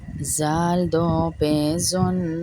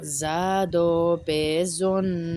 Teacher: زال کو نرمی سے، زا کو سختی سے پڑھیں گے۔